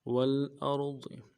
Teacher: ضاد کو موٹا ادا کریں گے اور زیر کو کسرے کو نرم سے پڑھیں گے